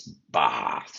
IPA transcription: bɑːrθ